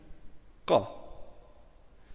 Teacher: Shkronja Qa është tingull i fortë, andaj kur vihet mbi të harekja fetha, lexohet me a të shkurtër.